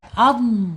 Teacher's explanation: mempunyai sifat istiala diangkat angkat lidahnya ya diangkat